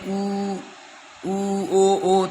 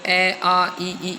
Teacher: जब हम बोलते हैं ऊ ओ तो होठों की आकृति हमारी ऐसे वर्त के समान गोल हो जाती है। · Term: वृत्ताकार